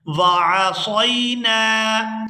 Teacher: یہاں صاد کو اس کے مخرج سے صحیح طور پر ادا کریں گے۔ سین اور صاد ان دونوں میں فرق کر کے ادا کرتے ہیں تاکہ معنی کے اندر کوئی تبدیلی نہ آئے۔